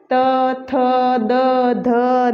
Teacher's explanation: हम बोलेंगे वो दांतों से जीभ टकराएगी हमारी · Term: दंत्य